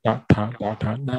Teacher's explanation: 肌肉还是口腔里面的肌肉。比如说这个叉叉加加呀，它是在舌头后面碰触，在它舌头后面碰触上颚的发音，同一个地方，但是却发出不同的五个音。我们再看第三句第三行辅音，哒哒哒哒哒是在上颚。前额，舌头稍微往上，舌尖稍微往上碰触，靠近舌尖，不是舌尖，靠近舌尖的地方碰触上颚来发音，哒哒哒哒。那对缅甸人来说，这个没有问题，因为他们语言有这个发音的方式。这个时候舌尖呢没有碰触到牙齿，它只是舌尖呢稍微后面的部分碰触上颚来发音，然后碰触过后就发音哒哒哒哒哒。这一行跟下面那行呢，它的发音相似，但是呢只是不同的地方。哒哒，第三次哒哒哒哒哒。所以第三行哒哒哒哒哒呢， 它的特点就是舌头舌尖后面一部分稍微顶着上颚发音